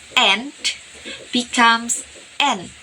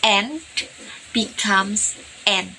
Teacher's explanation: Because the d sound at the end of and is omitted. And this is very common in daily conversation to speed up speech. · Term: apocope